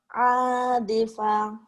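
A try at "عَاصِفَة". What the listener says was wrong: Asifa. Sod. Gak ada titiknya ya. Asifa.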